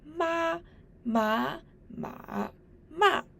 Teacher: These four words ma ma ma ma are of tones one two three and four respectively. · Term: four tones